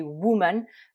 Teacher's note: donc ici le O se prononce un peu comme un OU